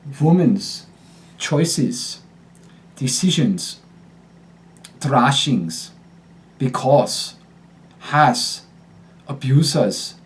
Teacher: at the end of syllables it shifts from a voiced Z to an unvoiced s